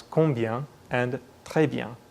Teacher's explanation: Most French people would pronounce this word combien with the nasal sound at the end sounding more or less like très bien